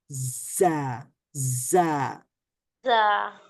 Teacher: জিহ্বার অগ্রভাগ এটা সামনের নিচের দাঁতের মধ্যভাগে লাগবে এবং দুই দাঁত বন্ধ থাকবে, আর দুই দাঁতের মধ্য জায়গা থেকে, ফাঁকা জায়গা থেকে জায়ের সাউন্ডটা বের হবে।